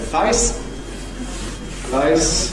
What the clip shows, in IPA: fʌɪs